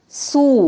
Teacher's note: واو پہ ہونٹ گول کریں گے اور ایک الف کے برابر لمبا بھی کریں گے.